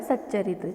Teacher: यहाँ पे च के साथ संधि हो रही है तो त बदल जाएगा आधे च में, यानी कि इसे पढ़ा जाएगा सच्चरित्र।